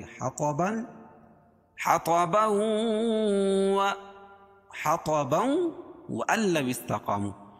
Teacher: حَطَبًا کو وَأَن لَّوِ اسْتَقَامُوا کے ساتھ ملا کے پڑھیں گے، حَطَبًا وَأَن لَّوِ اسْتَقَامُوا، تو یہ ادغام مع الغنہ ہو جائے گا